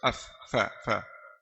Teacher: Ada yang dari bibir, fa. Bibir bawah bertemu ujung gigi atas